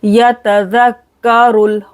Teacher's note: रो मोटा पढ़ेंगे, लाम के साथ मिलाएंगे